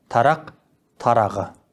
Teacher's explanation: Регрессивті ассимиляцияның кездесетін түрлері төмендегідей. Қ, к, п дыбыстарының біріне біткен сөздерге жалғанатын қосымшаның бас дыбысы дауысты болса, бұл үшеуі ұяңдап кетеді.